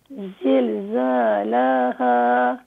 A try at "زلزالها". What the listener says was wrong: لام کو نہ کھینچیں. زلزالها.